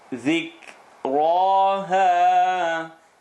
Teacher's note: Ra is heavy, ha is light.